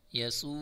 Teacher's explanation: واو مدہ کھینچ کر پڑھیں گے